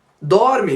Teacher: podemos perceber que a tônica da palavra dorme é o dor. É a penúltima sílaba que é a tônica. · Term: sílaba tônica